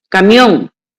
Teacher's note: Es una palabra aguda. La mayor fuerza de voz la tiene en on